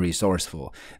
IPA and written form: rɪˋsorsfəl (resourceful)